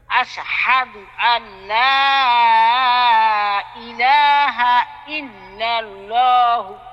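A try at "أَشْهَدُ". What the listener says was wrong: আশ এখানে আশের মধ্যে কলকলা হয়ে যাচ্ছে। আশ স্পষ্ট হওয়ার পরে মানে উচ্চারণটা ক্লিয়ার হওয়ার পরে আরেকটা উচ্চারণ শুরু করবেন। আশহাদু আল্লা ইলাহা ইল্লাল্লাহু বলেন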